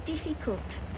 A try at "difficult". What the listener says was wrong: Diff. Not deaf. The word is difficult.